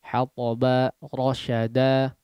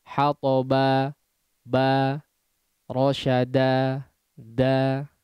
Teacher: Silahkan diucapkan hanya 2 harakat saja tanpa menutup kedua pita suara di akhir madnya. Ya. Sehingga seolah ada hamzah di situ. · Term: mad iwad